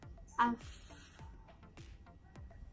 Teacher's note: The sound F is a sound from the consonant pairs group, and it is called the voiceless labiodental fricative. This means that you create friction between the bottom lip and top tooth. The voiceless F sounds is produced by stopping and releasing air between the bottom lip and the front side of the top teeth.